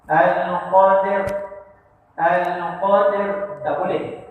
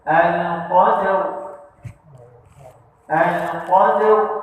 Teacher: Masa kita matikan ro ni, mulut kita muncung sikit dan pangkal lidah kita terangkat. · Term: Tebal